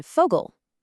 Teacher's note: The letter V is pronounced Fau, and it makes an F sound like in Vogel.